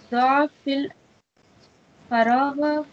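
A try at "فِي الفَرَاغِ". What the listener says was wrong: Faraghi, Arfijar fi, so kasra.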